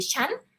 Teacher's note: people pronounce with the high tone that is more like the common way we speak